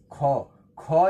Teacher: ख एक ऐसा ध्वनि है जो महाप्राण भी है अघोष भी है कंठ भी है और स्पर्श व्यंजन है